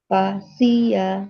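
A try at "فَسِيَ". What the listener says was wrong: Nah, huruf fa-nya hati-hati tidak pa tapi fa.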